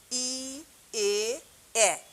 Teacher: সম্মুখ স্বরধ্বনি হচ্ছে এই ধ্বনি উচ্চারণের সময় জিভ সামনের দিকে থাকে, তাকে বলা হয় হচ্ছে সম্মুখ স্বরধ্বনি।